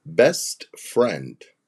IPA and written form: bɛst frɛnd (Best friend)